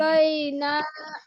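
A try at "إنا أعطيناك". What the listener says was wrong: এবার ইন্নার গুন্না বাদ গেছে আপু। ইন্না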